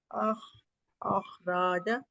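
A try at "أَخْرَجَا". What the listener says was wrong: اخرجا، رجا. اس کو لمبا نہیں کرنا، را کے اوپر خالی زبر ہے، یہ صرف ایک کاؤنٹ اسٹریچ ہوگا. اخرجا.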